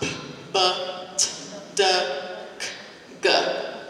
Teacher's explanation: You can't draw them out. They stop. They have a stopping point. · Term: plosives